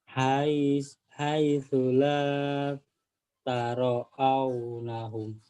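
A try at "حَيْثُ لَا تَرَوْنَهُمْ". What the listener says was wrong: Taruh aunya dari mana dapat aunya? Ayo, pikir. Taro. Kalau taro au ada alifnya. Tarau nahum.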